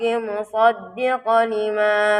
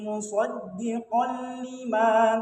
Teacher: fathatain bertemu lam itu sifat hukumnya idgham bila gunnah. Jadi dia hukumnya itu tidak berdengung. Jadi langsung dimasukkan.